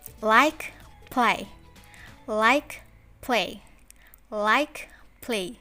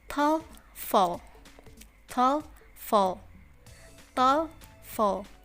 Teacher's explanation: often referred to as clear l for the alveolar sound and dark l